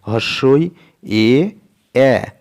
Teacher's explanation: এই স্বরধ্বনি উচ্চারণের সময় ঠোঁট দুটি প্রসারিত হচ্ছে। আমাদের যে ঠোঁট আছে এই ঠোঁট দুটো প্রসারিত হচ্ছে, একদম উচ্চারণ করো পরিষ্কার বোঝা যাবে।